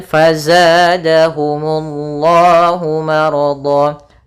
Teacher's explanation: pada lafal Allah kembali mad tabi'i dan di sini Allahnya tebal